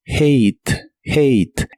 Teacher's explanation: La H se pronuncia como una J suave de español y la A de esta palabra se pronuncia como A y la E del final no se pronuncia, lo cual es muy común en inglés.